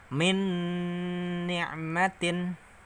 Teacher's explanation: Nun mati bertemu huruf nun, maka masuk idgham bighuna, masuk dengan mendengung. Bacanya min, masuk ke nun sini.